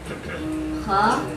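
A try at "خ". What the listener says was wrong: Ya kha, dia kho. Bukan namanya kha, kha, kho. Ini gak kha, ya kho.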